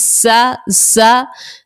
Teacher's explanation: زا سیٹی والے حروف کا آ گیا ہے، اس لیے ہم نے اس میں سیٹی نکالی